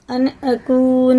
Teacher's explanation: الف آ رہا ہے، تو یہ اظہار کا قاعدہ ہو گیا، جیسے لکھا ویسے ہی پڑھیں گے، غنہ اخفا اس میں نہیں ہوگا